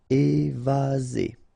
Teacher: Remember, one S between two vowels. Z.